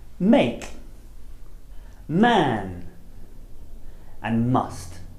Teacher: The sound is called the bilabial nasal, which means that you use both of your lips and the air comes out of your nose. It's defined by the motion of your lips, and it's made with the flow of air through the mouth completely blocked.